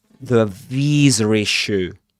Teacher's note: He does pronounce small r sound in between visa and issue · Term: intrusive R